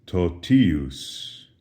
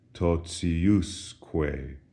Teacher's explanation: Notice the accent shifts from the ti syllable to the us syllable, and as a result, the pronunciation of ti is no longer t, as in totius, but rather it softens.